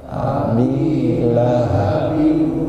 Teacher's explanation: Kemudian ada dengung sempurna, didengungkan sampai hidung. Kalau kita tutup hidung ngucapin abilahabiu ini masih bisa Pak.